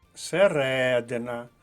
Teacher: наголос на другому складі